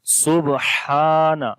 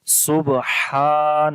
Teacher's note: تو یہاں پر جو قلقلہ ہوگا وہ کمزور قلقلہ ہوگا، تو پڑھیں گے سبحان، ہا کو لمبا کریں گے کیونکہ یہاں پر الف مدہ ہے